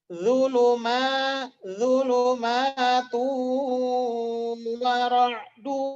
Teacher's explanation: Zulumatu wa ra'du, ditahan. Itu idgham bi gunnah, makanya ditahan.